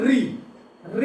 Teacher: री को बोलिएगा तो आपकी जो जीभ है वो दांत के ऊपर मूर्धा को स्पर्श करती है।